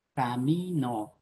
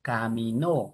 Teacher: camino como palabra grave es diferente de caminó como palabra aguda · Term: ubicación del acento